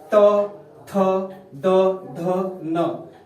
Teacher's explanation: ये सब दंतव्य होता है, दांत की सहायता से बोला जाता है